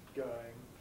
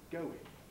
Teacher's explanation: this tendency when we have a diphthong followed by a weak vowel to lose the second part of the diphthong, thus saying going rather than saying going. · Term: Smoothing